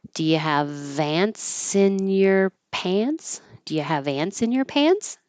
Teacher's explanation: It's a yes no question, so it'll go up.